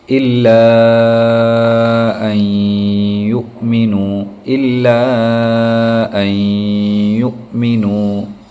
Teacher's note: مد منفصل کے کھینچنے کی جو مقدار رہتی ہے وہ 3 الف کے برابر رہتی ہے